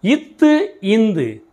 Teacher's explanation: நாவின் நுனி மேல்வாய் பல்லின் அடியில் பிறக்கின்றன